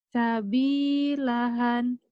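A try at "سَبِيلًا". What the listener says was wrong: Sabilahan ini kan enggak ada. Enggak ada ini mah sabilaha.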